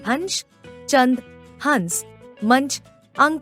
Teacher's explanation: अनुस्वार के उच्चारण में नाक से सांस अधिक निकलती है तथा मुख से कम